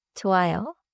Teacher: The final 요 is short and rounded.